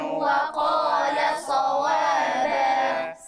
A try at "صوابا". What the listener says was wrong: سمعت الصاد سين، دي صاد. صا صا صوا صوا صوابا.